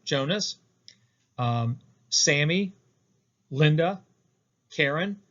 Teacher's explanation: The first beat is stressed, and then the second beat is unstressed. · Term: trochee